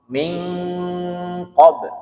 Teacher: makhrajul hurufnya di pangkal lidah bagian atas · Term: ikhfa